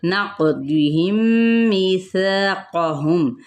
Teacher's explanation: क़ाफ पे कलकला, दौद पुर है।